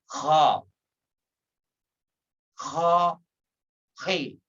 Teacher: Makharijul huruf ha agak sedikit ngorok.